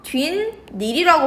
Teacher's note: 뒷 닐이라고 발음이 돼요. 보다시피 니은 소리가 덧나요. 그쵸? 이게 니은 소리가 덧난다라고 얘기를 하는 거예요.